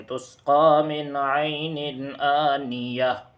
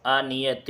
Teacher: تا ہے، تو اس پر جب ہمیں وقف کرنا ہو تو اس گول تا کو ہائے ساکنہ سے بدل دیں گے اور اس طرح پڑھیں گے تسقی من عین آنیہ، آنیۃ نہیں